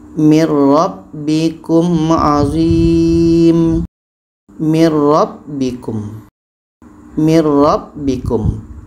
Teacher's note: Bunyi nun kita masukkan ke ra. Bunyi nun kita masukkan ke ra dan tidak boleh dengung. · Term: idgham bila gunnah